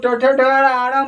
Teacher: उसी प्रकार ट ठ ड ढ आड़, जो ट वर्ग है, ट वर्ग को ट ठ ड आड़ बोलने में जीभ क्या हो जाती है? मुड़ जाती है। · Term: मूर्धा